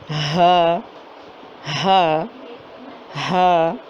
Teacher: ہا ہا ایک ہوا سی اندر جاتی ہے اور باہر آ جاتی ہے. ہا ہا ہا صرف حلق استعمال ہو رہا ہے، باقی اور کوئی چیز استعمال نہیں ہو رہی. منہ کا خالی حصہ جہاں سے کہ آواز نکل کے آ رہی ہے.